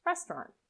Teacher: the a u is often not pronounced so you can link directly from the t to the r